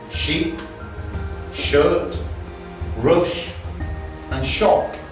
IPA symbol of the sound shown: ʃ